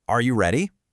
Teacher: For a yes or no question, are you ready? The voice just lifts at the end. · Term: rising intonation